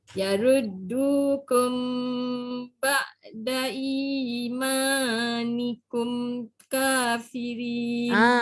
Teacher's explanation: Ba'da dah tak panjang. I dengan ma je panjang.